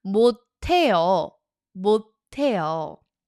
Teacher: There's a t carrying over because the s meets the h. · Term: assimilation